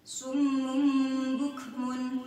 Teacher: Kemudian berhadapan dengan huruf ba, bukmun. Maka cara membacanya dhamma tanwin berubah bunyinya menjadi mim sukun.